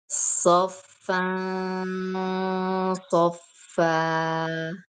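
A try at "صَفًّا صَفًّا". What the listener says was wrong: Tetapi karena huruf shad adalah huruf tebal, maka harus tebal juga ikhfa dan gunahnya. Soffan, soffan, soffa.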